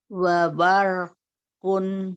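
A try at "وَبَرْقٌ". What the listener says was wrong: Ba ke samping, ba. Ke atas ro. Bar. Ke atas bar. Ba ke samping. Bar. Bar. Belum ke atas yang ro-nya. Coba ganti jadi so. Baso. Ke atas. Baso. So-nya ke atas. Baso.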